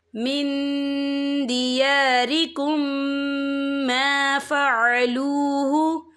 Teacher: اور آگے دیکھیں من دیارکم، یہاں میم ساکن ہے، میم ساکن کے بعد جو ہے میم مشدد والا حروف آ رہا ہے، تو یہاں پر ادغام شفوی ہوگا، ہم پچھلے میم کو اگلے میم میں مدغم کریں گے اور ہم یہاں غنہ بھی کریں گے